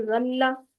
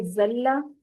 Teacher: زال نرمی سے ادا ہونے والے حروف میں سے ہے، جبکہ زا جو ہے وہ سختی سے سیٹی کے ساتھ ادا ہونے والے حروف میں سے ہے